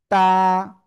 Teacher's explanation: জিহ্বার আগা সামনের উপরে 2 দাঁতের গোড়ায় লাগাবো, লাগিয়ে এক আলিফ টেনে পড়বো।